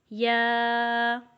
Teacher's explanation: یا کے ساتھ الف ہے تو اس کو ہم صرف 1 الف کے برابر ہی لمبا کریں گے